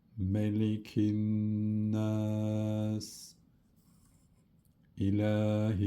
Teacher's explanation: Bir de şeddeli nlara tutuyoruz ve gunneli okuyoruz